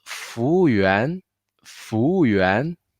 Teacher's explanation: So for 服 务, the FUWU, that's the W and U sounds the same. So the tone will be up and down and then to raise again.